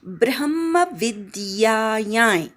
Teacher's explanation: ब्रह्मविद्यायां ब्रवर आघात, विद्यामधला वीवर आघात, अनुस्वारचा अर्धा य, नाकात नाही य म्हणायचा.